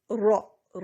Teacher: سب سے پہلا شرط نمبر 1 کہ را کے پر زبر ہو. را کے پر زبر ہوگی تو را کو موٹا کر کے پڑھیں گے. را را، اب اس کو را نہیں پڑھنا، باریک نہیں کرنا، را زبر والا را. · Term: را کی تفخیم